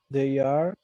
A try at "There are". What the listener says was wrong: There, no they, there. No es they. There are. Pronunciation, there are. So this is not correct. This is correct.